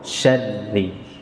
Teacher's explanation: Kalau syaril berarti shinnya panjang. Yang tepat shin langsung ke ro, syarril.